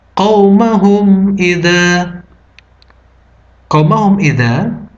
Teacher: cara membacanya adalah mim mati dibaca jelas. Hukumnya adalah izhar syafawi.